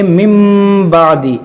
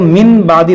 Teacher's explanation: یہاں پر دیکھیں ہم پڑھیں میم، نون ساکن کے بعد با ہے، یہاں پر ہوگا اقلاب، یعنی نون ساکن کو ہم میم سے بدل کر پڑھیں گے. اس کو پڑھیں گے مم بعدی، اس کو من بعدی نہیں پڑھیں گے.